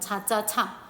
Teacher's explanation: 파열이 되면서 마찰되는 거야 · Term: 파찰